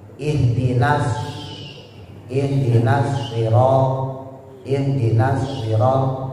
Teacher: Kalau shad dia punya sifat namanya taswir. Suara seperti siul burung atau disebut juga safir.